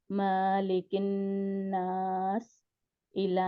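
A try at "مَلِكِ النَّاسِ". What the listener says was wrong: मालिकिन नास है, मालिकिन, नहीं माँ को खींचे नहीं, अलिफ डाल रहे हैं आप।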